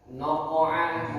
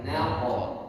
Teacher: Nanya tipis, qofnya tebal.